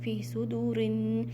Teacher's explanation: नून मुशद्दद means यहाँ पर आपने गुन्ना करना है